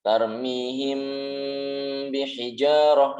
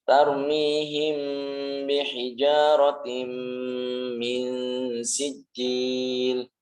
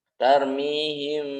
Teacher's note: Mimnya disamarkan, tapi walaupun sama tetap harus mengatupkan kedua bibir. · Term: Ikhfa syafawi